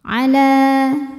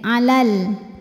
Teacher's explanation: Alif didahului harokat fathah, maka panjang 2 harokat. Ala, tapi jika diteruskan maka madnya ini gugur, lamnya jadi pendek. Alal, namanya takhallus bil hadfi sebab ada pertemuan 2 huruf sukun.